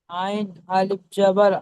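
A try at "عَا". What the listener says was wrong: আইন এক আলিফ, 3 আলিফ টেনে পড়েন। অক্ষরের টান অক্ষরে দেন।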